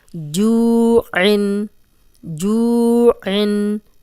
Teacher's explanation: جو واو مدہ ہے، جزم والی واو پیچھے جیم پہ پیش، تو اس کو 2 حرکات لمبا کریں گے